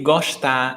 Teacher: here in Fortaleza, every S before a T is pronounced sh. So that's why I say gostar, estudar.